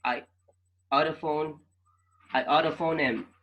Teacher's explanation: the H is not pronounced